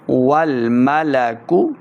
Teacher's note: واو لام زبر ول واو کو جب پڑھیں گے دونوں ہونٹ گول کرنے ہیں، پھر واو کا مخرج سے ادا ہوگا. والملک کاف پیش کو، اس کاف کو ہم نے موٹا نہیں کرنا